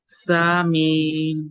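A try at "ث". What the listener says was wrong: ये सा नहीं है। जबान की नोक को बाहर निकाल के पढ़ेंगे, ऊपर के दांतों में लगा के।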